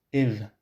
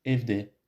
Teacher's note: A word with the front vowel e becomes evde, in the house.